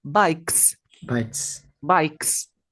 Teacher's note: Esto va a ser una s Cuál es el plural es bikes tienes que botar aire como desinflar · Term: no vibra